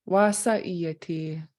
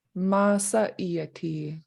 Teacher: in the Teslin area, in some instances, instead of a W for wa, you'll hear an M for ma. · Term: inland